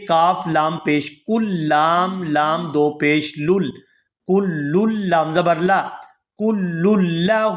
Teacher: کاف کو لام مشدد کے ساتھ ملائیں گے